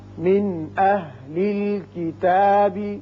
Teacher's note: نون ساکن کے بعد حمزہ و شکل الف ہے جو حروف حلقیہ میں سے ہے، لہذا یہاں نون ساکنے پر اظہار حلقی ہوگا